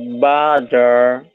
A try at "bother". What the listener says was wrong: there's a bit of difference too, the way you're saying your O. I think I'm not sure if it's longer.